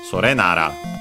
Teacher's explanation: Sore unaccented, Nara usually accent on the first syllable, so it should be, yeah, we have the accent of Nara, Sore Nara.